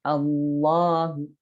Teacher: Allahu, seperti mau ke O, tetapi tidak jadi. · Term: tafkhim